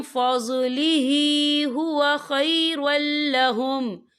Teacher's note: यहाँ देखिए खैरुल, रा के पर तनवीन, तनवीन के बाद जो है लाम आ रहा है और लाम जो है रूफ यरमलून में से है, तो यहाँ पर इदगाम होगा, तो हम इसे बिना गुन्ने के पढ़ेंगे। ठीक है, हम यहाँ गुन्ना बिल्कुल नहीं करेंगे।